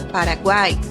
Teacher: na última sílaba nós temos uma semivogal o mais uma vogal a mais uma semivogal e as três juntas formam o tritongo